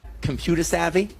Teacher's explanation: Drops the final R sound saying computer as computer.